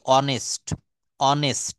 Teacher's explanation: এখানে হনেস্ট এটা উচ্চারণ করছি না, উচ্চারণ করছি অনেস্ট।